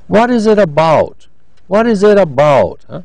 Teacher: It's a question, but we have they have a declining intonation at the end because we want a factual answer